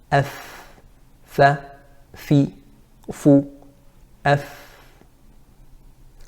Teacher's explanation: it's coming from the inside of the lower lip with the tip of the upper teeth. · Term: makhraj of fa